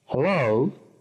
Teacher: Subrayamos hello, el acento en la segunda sílaba.